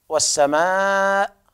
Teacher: إذا وقفنا نقول والسماء 4 أو 5 حركات بالسكون المحض